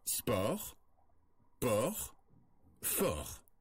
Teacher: Pour prononcer ce son, on ouvre davantage la bouche que pour le O fermé. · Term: le O ouvert